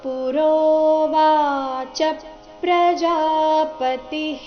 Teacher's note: ವಿಸರ್ಗದ ಉಚ್ಚಾರಣೆ ಇಲ್ಲಿ ಹಿ ಅಂತ ಬರಬೇಕು.